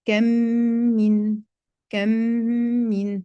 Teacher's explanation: C'est l'insertion d'un mime sékina dans un mime vocalisé pour obtenir un seul mime accentué. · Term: l'assimilation labiale